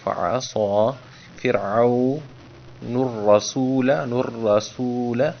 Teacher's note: اعوذ باللہ من الشیطان، تو آپ کو موٹا کر کے پر کر کے پڑھا ہے، من الشیطان الرجیم، بسم اللہ الرحمن الرحیم۔ فعصا، صاد کو پر کر کے پڑھا ہے تاکہ سین صاد اور ثا میں تمیز ہو